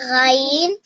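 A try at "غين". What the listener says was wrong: গাইন না, গইন বলো, গইন।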